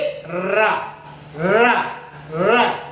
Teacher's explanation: लुंठित का मतलब होता है जब हम इसको बोलते हैं तो हमारी जीभ में वाइब्रेशन होता है, इस तरह से ऊपर नीचे जाती है, लुढ़कती है, लोड़न होता है, इसलिए हम इसको लुंठित कैसे, जैसे र र र, देखो इसमें वाइब्रेशन हो रहा है, ऐसे ऐसे जीभ हिलती है, ऊपर नीचे जाती है, इसलिए र को हमने लुंठित की श्रेणी में रखा है, इसका नाम लुंठित है।